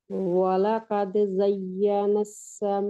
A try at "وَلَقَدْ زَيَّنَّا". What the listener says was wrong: زین، زا یا کے ساتھ ملے گی، یا آگے پھر نون پھر مشدد ہے، یا آگے نون کے ساتھ جا کے ملے گی. زین السما، ین نون پہ غنہ اور پھر نون آگے سین کے ساتھ جی گا، زینس نہیں ہے، ٹھیک ہے.